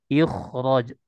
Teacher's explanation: Kan itu kasroh sebelumnya bertemu huruf kho. Huruf kho-nya dibaca dengan tebal. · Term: tafkhim mutlak